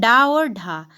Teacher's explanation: फिर आते हैं उत्क्षिप्त व्यंजन तो उत्क्षिप्त हो जाएंगे ड और ढ